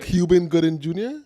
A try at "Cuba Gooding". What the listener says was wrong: It's not Cuban. It's Cuba.